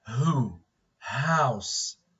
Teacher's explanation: only sound produced without the active use of the tongue is it is the voiceless sound it is the voiceless sound · the vocal folds or the vocal cords are the place of articulation · the space between the vocal folds of course is open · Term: glottal sounds